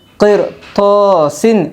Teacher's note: رائے ساکنہ کے بعد حرف مستعلیہ کے 7 حرفوں میں سے طا آئی ہے، اس لیے رائے ساکنہ پر ہوگی